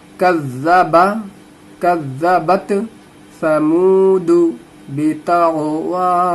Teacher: काफ को जाल से मिला देना है। कज़्ज़बा ता ज़बर बत, कज़्ज़बत समूदु, समूदु वाव मद्दा है, मुंह में थोड़ा सा खींचना है।